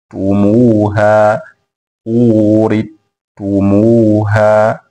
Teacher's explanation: wamesoma kwa idgham herufi ya atha kwenda katika herufi ya atta fi lafdhi urithumuha, katika tamshi la urithumuha katika surat al-A'raf aya 43, lakini pia linapatikana katika surat az-Zukhruf aya ya 72.